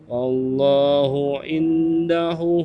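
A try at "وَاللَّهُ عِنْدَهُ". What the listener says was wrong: hu-nya panjang. Kenapa hu-nya dibaca panjang? Indahu karena tandanya itu adalah dhammah terbalik ya, bacanya 2 harokat.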